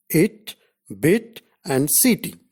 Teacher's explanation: During the articulation of E vowel, the rear part of the front of the tongue is raised in the direction of the hard palate, just above the half-close position. It can be described as a centralized front, unrounded vowel just above the half-close position. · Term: Short E